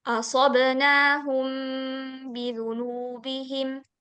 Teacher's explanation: Dikatakan ikhfa syafawi apabila mim sukun bertemu huruf ba. Cara membacanya mendengungkan.